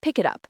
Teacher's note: The T from it links to up creating a smoother sound. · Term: linking words